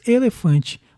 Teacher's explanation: uma paroxítona com vogal nasal formada por an